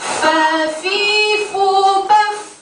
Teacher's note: perut bibir bawah bertemu dengan ujung 2 gigi atas, keluar darinya huruf fa